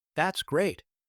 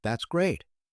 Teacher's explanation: if I say it with a flat, sarcastic tone, that's great. It actually means the opposite. I'm annoyed or disappointed.